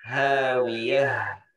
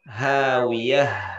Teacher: Jadi memang kayak hak besar tapi bukan hak dada ya. Karena makhrajnya hanya di pangkal tenggorokan, tidak sampai dada.